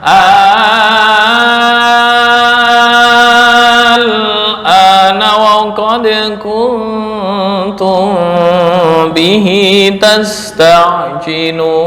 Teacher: 6 harokat atau mat lazim kilmi mukhaffaf karena hampir sama dengan mat farqi